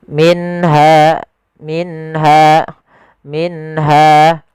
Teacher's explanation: suara nun sukunnya diperjelas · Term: izhar halqi